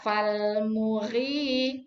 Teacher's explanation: Fal muri, ri-nya yang panjang, bukan mu-nya.